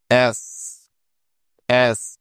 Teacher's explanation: দুই দাঁতের মাঝ দিয়ে ছ এর মত খানিকটা বাতাস বের হবে